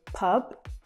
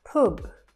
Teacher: so it has more of an uh sound quite a short uh sound maybe as in good